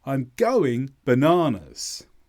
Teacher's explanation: Bananas, the stress is in the middle.